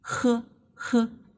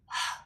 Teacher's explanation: Compare with the English h. The Chinese h is to front. The English h is a glottal, 声门音，是在喉咙下面。The Chinese h sounds too strong and too loud.